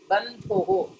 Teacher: You have to give stress on tha. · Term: Mahaprana